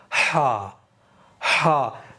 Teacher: हलक से हवा बाहर फेंकेंगे